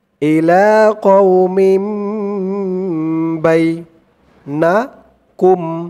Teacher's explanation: হবে ইকলাব গুন্না তানবিনের পরে ইকলাবের হরফ একটি বা আসছে তাই এই তানবিন টাকে এই ছোট্ট মিম দ্বারা পরিবর্তন করে পড়তে হবে